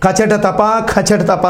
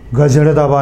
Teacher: అంటారు నువ్వు ఎంత గట్టిగా అయినా చదవండి వోకల్ కార్డ్స్ కదలవు వైబ్రేషన్ రాదు కచటతప కచటతప అని చదివిన వైబ్రేషన్ రాదు. నువ్వు ఎంత మెల్లగా కూడా చదువు గజడదబ అంటే కూడా ఇదంతా వైబ్రేషన్ వచ్చేస్తుంది.